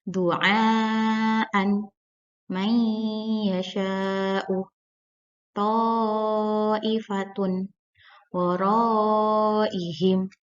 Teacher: Yang pertama, mad wajib muttasil, yaitu mad bertemu huruf hamzah dalam satu kalimat panjangnya 2 alif atau 4 harokat.